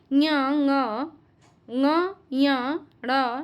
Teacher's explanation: मुख और नासिका दोनों से उच्चारण होता है वह अनुनासिक कहलाते हैं